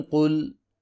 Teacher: قاف پیش لام قل، قاف کو موٹا کر کے پڑھیں گے